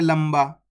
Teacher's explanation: करो आपसे पढ़ा ही नहीं जाएगा आधा ना का उच्चारण करके इसमें आधा मा का उच्चारण होके ही पढ़ा जाएगा